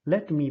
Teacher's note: First syllable is unstressed, second one is stressed.